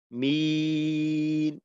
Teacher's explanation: যদি এমন হয় যে মাখরাজে যাওয়ার সাথে সাথেই আওয়াজটা বন্ধ করলাম, যেমন মিন, মাখরাজে যাওয়ার সাথে সাথে আওয়াজ বন্ধ হয়ে গেল, তো ওই ক্ষেত্রে কিন্তু ওই হরফের উচ্চারণটা ঠিক মতো প্রকাশ পায় না।